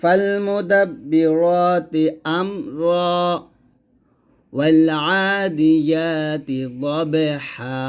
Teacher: প্রত্যেক জায়গায় কিন্তু আমি ওয়াকফ করছি, আর ওয়াকফ করার কারণে আমি প্রত্যেকটা জায়গায় এক আলিফ পরিমাণ টান দিছি। তো এইরকম আপনার কোরআন মাজিদের মধ্যে অনেক পাবেন যেখানে থামবেন, মানে আয়াতের শেষে এরকম দুইটা জবর আসবে।